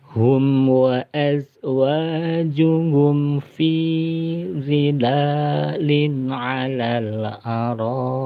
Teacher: tanwinnya dibaca jelas karena bertemu dengan ain ya. Ain itu huruf idhar ya. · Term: hukum idhar